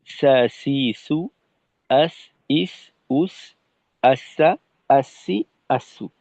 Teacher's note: সিনের ক্ষেত্রে বলতে পারি জিহ্বার আগাটা সামনের নিচের দুই দাঁতের একেবারেই পেট বরাবর, মাঝ বরাবর লাগবে।